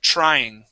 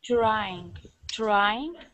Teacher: we want to pronounce a CH sound at the beginning of the word okay so instead of a a TR think of a CH